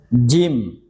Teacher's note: Jim tengahnya ini dinaikkan ke atas ya. Naikkan ke atas tempelkan ke langit-langit.